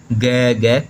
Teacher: ग कंठ से आवाज़ आती है